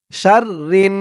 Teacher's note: হরকতের পরে নুনের উপরে তাসদিদ তাই ওয়াজিব গুন্নাহ